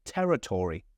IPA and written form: ˈtɛrɪtɔːri (territory)